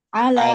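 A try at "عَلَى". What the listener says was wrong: Ala panjang.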